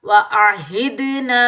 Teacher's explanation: दाल साकिन पर कलकला करेंगे, छोटी मद को 3 अलिफ की मिकदार में खींच कर अदा करेंगे, मद्दे मुनफसिल जायज को, ठीक है।